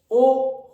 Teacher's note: ओ होठ गोल हो रहे, ध्यान से देखो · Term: वृत्तामुखी